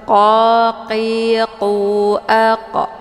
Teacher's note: ini qaf letaknya di pangkal lidah, jadi hurufnya tebal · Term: huruf qaf